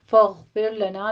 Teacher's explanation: غین کو مفخم پڑھیں گے، ادنا حلق سے آپ نے اس کو ادا کرنا ہے اور اس پر قلقلہ نہیں کرنا۔